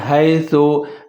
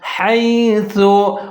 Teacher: آپ نے پڑھنا ہے حیثو اور سا کا خیال رکھنا ہے، اس کو ظاہر کر کے پڑھنا ہے، اس کو سین نہیں پڑھنا، سیٹی نہیں بجانی